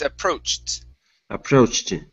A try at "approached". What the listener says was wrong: Okay, now with the T sound, you're ending with a I at the very end, saying approached. So try and only end on that T sound. Approached.